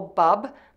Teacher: add the syllable bub by pressing the lips together for the B, adding the short relaxed uh vowel, then closing the lips again for the B